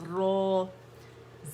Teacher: تو را جب فتحہ کے ساتھ آتا ہے موٹا پڑھا جاتا ہے. تو جب الف کھینچیں گے تو پہلے درجے کی تفخیم آ جائے گی.